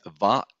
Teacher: va, labiodental, because we are touching our lips, right? So va, with our teeth.